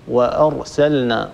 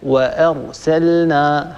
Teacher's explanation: همزة مستفلة مستحقها الترقيق ثم ننتقل إلى راء مفخمة · حاول يعني أن تصفي الحروف من بعضها مثلا وأرسلنا فانتبه للهمزة الهمزة لا تتركها تتأثر بجارتها الراء المفخمة لأنك لو تركتها تتأثر فهنا ستفخم الهمزة أيضا كما قرأت أنت